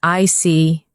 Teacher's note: When you show understanding with I see, your tone drops slightly to show calmness.